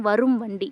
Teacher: வருமொழியில் வந்து வா வந்துச்சுன்னா, நிலைமொழியின் ஈற்றில் வந்த இம்முங்க வந்து தன்னோட அரை மாத்திரையிலேருந்து 1/4 மாத்திரையாக ஒலிக்கும். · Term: மகர குறுக்கம்